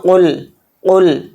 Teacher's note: قاف ہے، قاف کو موٹا پڑھیں گے